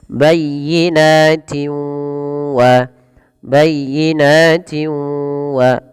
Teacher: cara membacanya adalah dengan menggabungkan bunyi tanwin ke dalam huruf wau. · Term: idgham bighunah, idgham bi gunnah